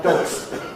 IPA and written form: dɒgs (dogs)